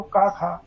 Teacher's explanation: खा का उच्चारण हो रहा है कंठ से